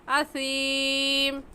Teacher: سین نہیں نکالیں گے بلکہ سا نکالیں گے